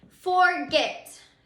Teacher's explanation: the accented syllable is at the end. It's the last syllable of the word forget. And remember, an accented syllable, all that means is that is our strongest syllable.